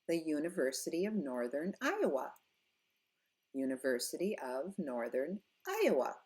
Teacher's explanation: We go up, no matter how long the place name is or the name is, we go up on the very last word. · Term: proper noun intonation